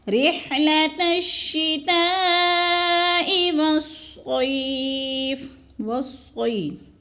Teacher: ہم نے اس کو 4 الف کے برابر کھینچ کر پڑھنا ہے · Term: مد متصل